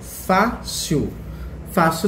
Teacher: Fácil também leva acento no Fá e é uma palavra paroxítona.